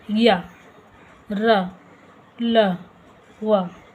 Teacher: बोलने से पता चल रहा है कि हवा अंदर की तरफ खींची जा रही है। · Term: अंतस्थ व्यंजन